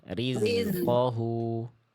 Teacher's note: bunyi desisnya itu, bunyi zainya itu ngalir terus tanpa adanya bunyi e. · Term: Zai sukun